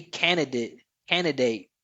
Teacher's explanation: At least for me, >> I think I would most more than the final syllable, I would most commonly, most consistently just drop that D, the first D. · I would most consistently just drop that D, the first D, candidate.